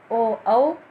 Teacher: कंठोष्ठ, कंठ और ओष्ठ यानी होंठ, गला और होंठ, कंठोष्ठ ये वर्ण हैं ओ औ, और इनका नाम हो गया, इन वर्णों का नाम हो गया कंठोष्ठ।